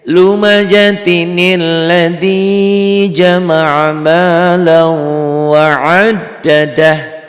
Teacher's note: Jadi kalau tanwin ketemu tasdid atau ketemu sukun harus dibantu nun kecil, nun iwad, nun wikoyah ini ya.